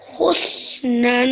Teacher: So this example has both the sukoon rule and also practicing the tanween rule that we learned. So this noon has a fatha tone, and you did that nasal sound at the end really, really well